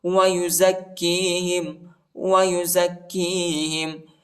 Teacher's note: کاف کو شدت کے ساتھ سختی کے ساتھ پڑھیں گے